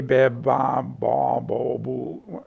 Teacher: the frequency of the formants is kind of starting from the same position, but it goes a little lower for a ba